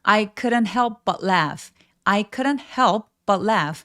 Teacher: 쿠 입술 내밀지 않고 크 의에 비슷하게 발음해 주세요. · couldn't 할 때 이 L 발음은 묵음이에요. 그래서 표현이 되지 않습니다.